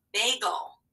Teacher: counting back three which one of these words has a uh schwa sound that kind of disappears you don't even hear the vowel